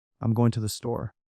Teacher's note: The word going becomes shortened and the emphasis is on store rather than the other words.